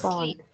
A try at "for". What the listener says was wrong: Không phải là phone mà là for. Con đọc âm o, cô không phải là âm on, âm o. O. For.